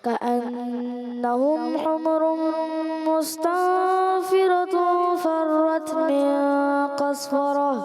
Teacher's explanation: مستنفرة ہے تن اخفا کا غنہ کرنا ہے